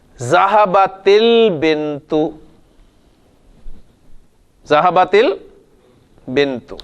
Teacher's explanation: پہلا جو ساکن ہے وہ کانسوننٹ میں سے کوئی حرف ہو تو رول یہ ہے کہ اس کانسوننٹ کو آپ نے زیر دے کے آگے ملانا ہے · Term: التقاء الساکنین